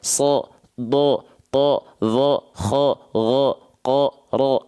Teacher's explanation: ketika fathah dia dibaca dengan vokal o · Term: huruf yang tebal